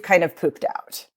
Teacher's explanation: it goes into the throat it makes this actual sort of bacon frying sound hence the term you know vocal fry and it's about honestly